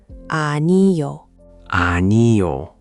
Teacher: make sure the ah at the beginning is nice and open like you're at the dentist saying a >> ano.